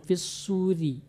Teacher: ro baris bawah dia tipis, ri fis suri, ri benar-benar tipis dia, tidak ada suara getaran. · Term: rotipis